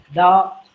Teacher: Another one is da, voiced, alveolar, plosive.